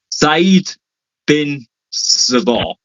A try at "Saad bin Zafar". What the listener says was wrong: Saad bin Zafar. Where's an E? Tell me, where do you see an E in the first name?